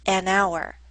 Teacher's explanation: hour starts with the letter H but we don't pronounce the letter H